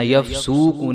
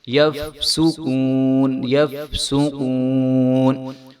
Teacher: سین کے اوپر پیش ہے تو اس کو ہم نے لمبا نہیں ہونے دینا، یفسوقون نہیں ہونے دینا بلکہ یفسقون، یفسقون۔